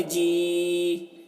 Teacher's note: اسے بھی کھینچ کر پڑھیں گے کیونکہ کھڑا زیر یا مدہ کی طرح ہے تو کھینچیں گے۔